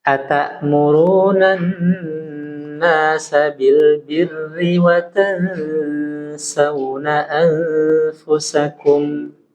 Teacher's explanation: Huruf ro-nya ini berharokat kasroh, ya, maka dia tarkik.